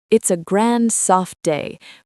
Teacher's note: The voice goes up and down a lot. It's like a song. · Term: melody